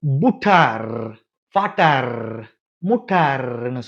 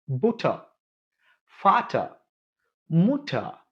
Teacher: இந்த எர் ஒரு சொல்லினுடைய, ஒரு வார்த்தையினுடைய கடைசியில வந்துச்சு அப்படின்னா அந்த எர்ன்னு வைப்ரேட் பண்ணாம அப்படின்னு விட்டுறணும். எடுத்துக்காட்டுக்கு புட்டார், ஃபாட்டார், முட்டார்ன்னு சொல்லாம புட்டா, ஃபாட்டா, முட்டா இப்படி சொல்லி ஆவோட நிறுத்திடணும்.